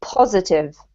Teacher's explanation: positive has the emphasis on the first syllable